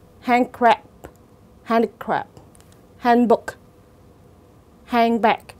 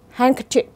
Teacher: trong những cái từ đó thì cái âm d được phát ra rất là nhẹ